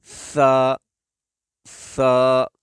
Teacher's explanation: دوسرا، اس کو ادا کرتے وقت زبان کی نوک اوپر والے دو دانتوں کی نوک، زبان کا سرا اوپر کے دو دانتوں کا سرا جب یہ آپس میں ٹچ ہوں گے تو اس وقت سا ادا ہوگا